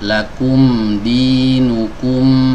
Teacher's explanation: Kalau kita membaca huruf mim sukun, ini ada dua bibir yang bertemu.